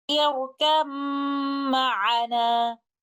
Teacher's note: Letter ba will merge completely into meme, and there will be no sound of letter ba. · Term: idgham mutajanisan